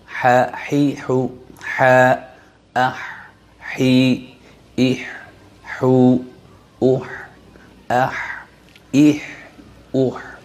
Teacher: দু নাম্বার মাখরাজ হলকের মধ্যখান হইতে আইন হা দুটি হরফ উচ্চারিত হয় এক আঙ্গুল পরিমাণ ফাঁকা রেখে উচ্চারণ করতে হবে হাউ জবর দিয়ে